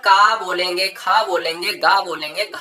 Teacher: कंठ से आने वाले वर्ण कंठ व्य कहलाते हैं